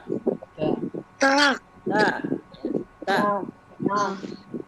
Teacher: ta ini hamas itu berarti ada hembusan. Tapi jangan dihembus kuat-kuat ya. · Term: sifat hamas